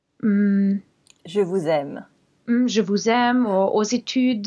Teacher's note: the word doesn't actually start with z. It's the previous word that ends with z. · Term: liaison